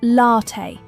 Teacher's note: Latte is usually pronounced latte with the stress on the first syllable in British English and often latte in American cafes.